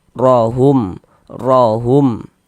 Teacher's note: Huruf ro kalau dia memiliki harakat fathah atau harakat dommah, maka huruf ro dibaca tebal, dibaca tabkhim. Sehingganya pengkalisan kita n terangkat ke atas.